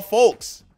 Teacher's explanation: He never once pronounced the L.